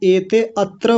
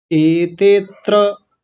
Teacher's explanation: ते के साथ ही त्र जुड़ जाएगा